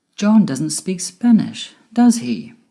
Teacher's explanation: if the intonation of the question tag goes down it means you're checking or confirming information that we are sure of it can also mean you're making conversation john doesn't speak spanish · my voice went down at the end with does he because i'm sure he doesn't speak spanish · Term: falling intonation